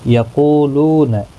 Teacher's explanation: قو واو مدہ ہے، لو واو مدہ ہے، دونوں کو ایک ایک الف کی مقدار کے برابر کھینچ کر پڑھیں گے